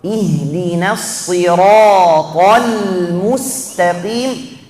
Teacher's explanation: kita mau langsung pindah dari tebal huruf ta ke huruf lam yang tipis